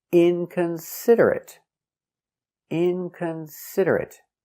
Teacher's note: inconsiderate with a stop T inconsiderate inconsiderate inconsiderate five syllables inconsiderate stress on the first syllable and third syllable